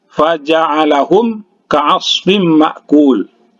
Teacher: Bertanwin bertemu dengan huruf mim, ya. Idgham bi guna, didengungkan, ya. Didengungkan karena ini salah satu huruf idgham bi guna, ya.